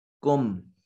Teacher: کم میم ساکن کے بعد نہ با ہے نہ میم ہے، لہذا میم کو ظاہر کر کے پڑھیں گے اور اس کو اظہار شفوی کا نام دیا جائے گا۔